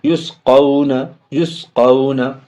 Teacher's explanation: قاف و زبر قو، واو میں بھی جزم ہے، پیچھے سے ملائیں گے لیکن واو ساکن سے پہلے زبر، اس لیے واو لین ہے تو جلدی بولیں گے